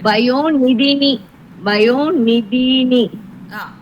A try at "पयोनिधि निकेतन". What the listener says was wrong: இல்ல இல்ல பயோநிதி நிகேதன அப்படி பிரிச்சுக்கோ. நீ சொல்லும் போது அந்த நீ சவுண்ட் கேட்கல எங்களுக்கு.